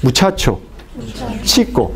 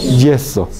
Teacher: Por qué empieza con la oclusión y termina con la fricción